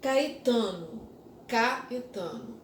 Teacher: em relação ao a que está com o tio Caetano kaetano O a tem mais força do que o é